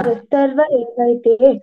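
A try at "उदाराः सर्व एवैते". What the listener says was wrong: కాదు ఉదారా సర్వ ఏవైతే అక్కడ దీర్ఘం ఉంది రా ఓకే ఉదారా సర్వ ఏవైతే ఇందాక కూడా ఉదారా అని చెప్పా అందుకే అది చెప్పమన్నా 26th వేదాహ అని చెప్పు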